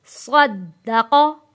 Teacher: قاف زبر قا، صدقا۔ صاد اور قاف موٹا پڑھیں گے اور دال کے اوپر ہم نے تھوڑا سختی کرنی ہے اور تھوڑا سا ٹائم یہاں رک کے پڑھیں گے